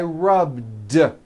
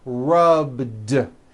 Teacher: All I did was add a voiced D sound at the end. Rubbed. It's not rubbed with an unvoiced T.